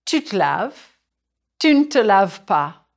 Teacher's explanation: In English, this unstressed vowel sounds like the central vowel of cinema. In French, it's called the e muet. And in French, the schwa is often dropped.